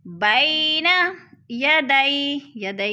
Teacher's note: بینا، یا ساکن سے پہلے با کے اوپر زبر ہے تو ادھر جا مدہ ہے، یالین ہے، یالین کو ہم نے لمبا بھی نہیں کرنا اور جھٹکا بھی نہیں دینا۔